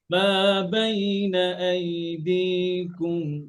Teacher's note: কুম পাতলা করে, হ্যাঁ, জিহ্বার গোড়া থেকে আর সামনে আগায়।